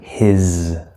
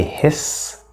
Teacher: remember this s here in this word is a Z sound we spell it with an S but it's a Z sound